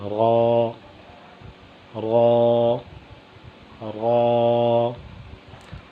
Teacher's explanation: را کی ادائیگی کی جگہ وہ زبان کی پشت والا کنارہ اور اوپر والے دانتوں کے مسوڑے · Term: را کا مخرج